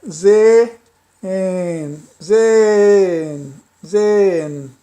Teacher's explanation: O H eu não pronunciei aspirado.